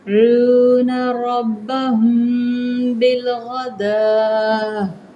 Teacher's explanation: میم ساکن کے بعد کیا آ رہا ہے؟ با آ رہی ہے، تو یہاں پہ اخفاء شفوی ہوگا، ہم اس کو کریں گے 1 سیکنڈ تک، ہونٹوں کو بند، زیادہ نہیں، 2 سیکنڈ نہیں، صرف 1 سیکنڈ۔